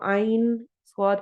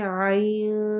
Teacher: تو ہم اس کی آواز کو آئین سواد کر کے نہیں پڑھتے، ہم اس کو پڑھتے ہیں آئین، اخفا کرتے ہوئے، نون کی آواز کو چھپا کے پڑھتے ہوئے سواد سے ملاتے ہیں. ایسے ہی آئین شورا میں دیکھ لیں، آئین کر کے نون کی آواز کو چھپانا ہے کیونکہ نون ساکن جو ہے اس کے بعد سین آ رہا ہے.